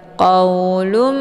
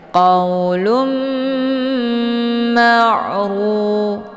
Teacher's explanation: Qaulum ya, jadi didengungkan dulu, jangan langsung dilepas ya. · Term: idgham bi gunnah